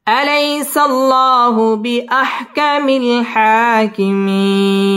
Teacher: হবে, আলাইসাল্লাহু বিআহকামিল, হা মধ্যে তাবাঈ এক আলিফ টেনে পড়তে হবে, হাকিমিন মধ্যে আরজি 3 আলিফ টান দিয়ে ওয়াকফ করতে হবে